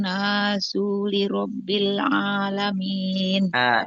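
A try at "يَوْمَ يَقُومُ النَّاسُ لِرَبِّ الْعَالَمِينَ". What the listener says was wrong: yauma yaqumun nasu lirabb. Sunya itu pendek, Bu. Jadi jangan yauma yaqumun nasu lirabbil. Itu panjang, ya.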